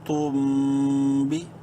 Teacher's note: میم ساکن کے بعد نیکسٹ با ہے، اس لیے یہاں پہ اس میم میں بھی غنہ کریں گے